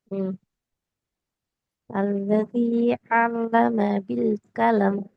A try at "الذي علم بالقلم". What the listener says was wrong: இப்ப நீட்டுப்படுது, குறைங்க.